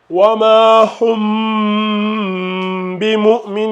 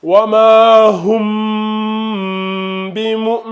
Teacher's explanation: Ferme bien les deux lèvres, tu vois. Mais on fait bien le nasillement. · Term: dissimulation